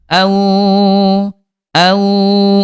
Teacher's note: Dari segi suara huruf wau dia rakhawah dia lemah suaranya mengalir